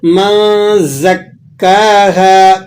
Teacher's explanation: کاف پر تشدید ہے تو ذرا اس کو آپ نے جماؤ کے ساتھ ادا کرنا ہے